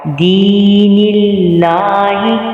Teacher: دین اللہ، یہاں پہ بھی یا مدہ ہو رہا ہے، اس کو بھی ایک الف کی مقدار کے برابر کھینچ کے پڑھیں گے اور اللہ کے نام کو پر نہیں پڑھیں گے، باریک پڑھیں گے